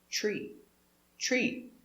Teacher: tree has a t and an r together we make the sound ch e tree together plant a tree plant a tree plant a